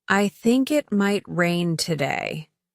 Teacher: The rising intonation here indicates that the speaker is unsure.